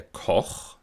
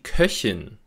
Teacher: Nach einem O-Vokal, wie in Koch, spricht man einen Ach-Laut, aber nach einem Ö-Vokal, wie in Köchin, spricht man eben einen Ich-Laut.